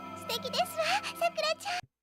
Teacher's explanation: The sentencing protocol wa is spelled wa and carries a rising intonation when used by women to express this soft assertion, distinguishing it from the Kansai dialect variant, which uses falling tone.